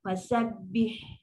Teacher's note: Dia tak ada terus stop sebab dia bukan huruf syidah. Dia ada sifat rokhawah. Masih berbunyi.